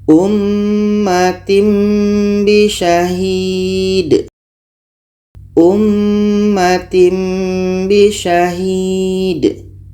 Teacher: Maknanya bunyi tanwin kita tukar kepada mim. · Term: iklab